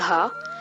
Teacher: To produce the fourth consonant Gha, you need to add both voicing and aspiration. Therefore, it is denoted by placing a dash and a dot.